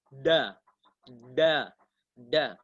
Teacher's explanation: ujung lidah menyentuh pangkal gigi seri atas